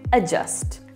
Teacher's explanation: This word right here, written as A-D-J-U-S-T, yes, does not have a D sound. We don't pronounce it as adjust or adjust.